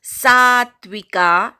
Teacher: यजन्ते सात्विका, सा पूर्ण म्हणायचा, नंतर अर्धा तचा उच्चार ऐकू आला पाहिजे.